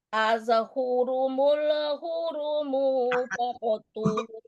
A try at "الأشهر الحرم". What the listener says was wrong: Ashhurumul, Bu, niki mana ashhurumul? Nggak ada. Jangan tambah-tambah. Ulangi lagi.